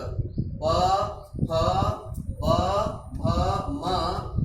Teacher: इनका उच्चारण ओष्ठ से होता है, इन्हें ओष्ठ्याः कहा जाता है।